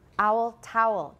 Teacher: they were probably different for me they have merged for me towel should be two syllables but actually i pronounce it the same as owl